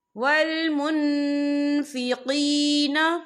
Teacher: نون ساکن کے بعد جو ہے فا آ رہا ہے، اور فا جو ہے اکفا کا ورڈ ہے تو ہم یہاں اکفا کریں گے، نون ساکن کی آواز کو ناک میں چھپائیں گے۔